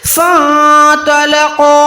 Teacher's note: یہاں پر فا زبر کے ساتھ نون ساکن کو ملائیں گے، نہ کہ فا زبر فا کر کے پڑھیں گے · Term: نون کو چھپائیں